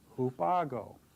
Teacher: notice how the vowel at the end of the preposition falls away because this next word begins with a vowel